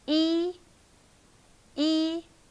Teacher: It's high flat tone.